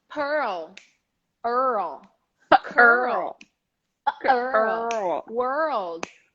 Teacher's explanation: include that little vowel to help you roll the r and then roll the L